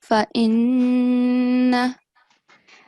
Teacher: you have to stress on the letter noon as well for 2 seconds, okay? because of the shad. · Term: gunna